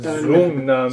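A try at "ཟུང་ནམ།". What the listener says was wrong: Sungnam. It's not a Z. It's a low tone S. Low tone S. Sungnam.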